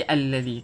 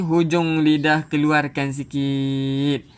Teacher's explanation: Alladhi, hujung lidah keluarkan sikit. Hujung lidah keluarkan sikit untuk zal.